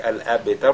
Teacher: nous avons la lettre ba qui porte donc à soukoun et qui est lu avec at-tafkhim